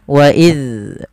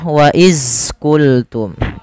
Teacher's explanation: Pada lafal wa idh qultum, pada lafal huruf dzal yang berharakat sukun, hati-hati teman-teman di dalam melafalkannya, jangan sampai terpantul. Apabila huruf dzal terpantul, maka ia termasuk kesalahan karena dia akan membacanya dengan bacaan qalqalah, padahal huruf dzal sendiri tidak memiliki pantulan. Agar bacaan tersebut tidak memantul, maka ujung lidah kita tempelkan dengan gigi sari atas. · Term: huruf dzal sukun